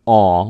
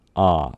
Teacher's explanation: the omicron, aw, will begin to sound a little bit more like a ah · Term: O-class vowels